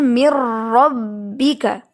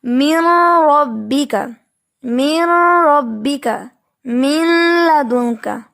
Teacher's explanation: لیکن یہاں پر بھی ادغام ایسا ہوتا ہے کہ نون کی آواز بالکل حذف ہو جاتی ہے، اس میں مکمل طور پہ مرج ہو جاتی ہے